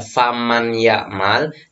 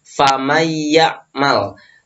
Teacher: Jadi yang seharusnya membaca faman ya'mal, jadi nunnya itu nggak dibaca, tapi dimasuki oleh huruf ya setelahnya. Jadi bacanya adalah famayyamal. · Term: idgham bi ghunna